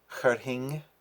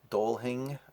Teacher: the F in the middle is generally not pronounced, it's pronounced like an H